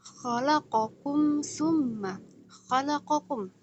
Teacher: Itu dibaca jelas. Izhar jelas dan syafawiyah yang keluar dari bibir. Dia bacaannya jelas. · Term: izhar syafawi